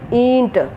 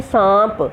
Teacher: अनुनासिक जो है स्वरों का गुण है, इसे बोलते समय हवा नाक और मुंह दोनों से निकलती है।